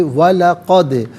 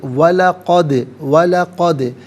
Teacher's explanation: دال ساکن ہے اور ساکن تو ہے لیکن یہاں پر چونکہ یہ حرف قلقلہ ہے تو ناظرین آواز لوٹتی ہوئی محسوس ہونی چاہیے۔ وَلَقَدْ وَلَقَدْ کرمنا، را پر زبر ہے، را کو پر کر کے پڑھا جائے گا اور را مشدد ہے، جماؤ کے ساتھ پڑھیں گے۔